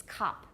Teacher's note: in British it's cup. It's almost ah. It's close to ah.